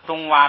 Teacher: 东洼呢也是当名词读，也是读双音节词，是平着读。后边不是轻声